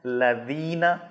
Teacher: لذینہ میں ذال ہے، زبان کا اگلا حصہ جو ٹپ ہے اس کو آپ نے اگلے دانتوں کے سرے پر لگانا ہے اور باریک کر کے پڑھنا ہے